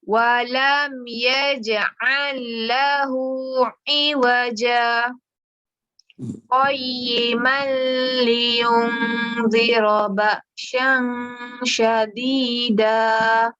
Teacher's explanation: Berhenti tapi kita tak ambil nafas baru. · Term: saktah